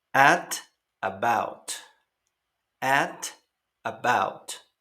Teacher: En pronunciaciones, sobre todo la americana, claro, la T suena como una R suave entre dos vocales.